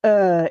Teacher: your tongue is resting in the middle of your mouth and your lips are also resting then vibrate your vocal cords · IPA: /ɜ:/